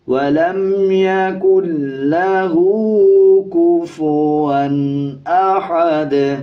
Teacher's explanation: جب وقف کریں گے دال کے دونوں پیش سائلنٹ ہو جائیں گے اور دال پہ قلقلہ کیا جائے گا